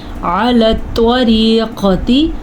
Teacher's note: طا کو پر پڑھنا ہے، را کو باریک پڑھنا ہے